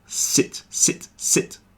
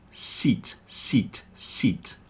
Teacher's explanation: the difference between the short I sound, I, and the longer E sound, E.